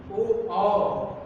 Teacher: कंठ और ओष्ठ की सहायता से इसे बोलते हैं कंठोष्ठ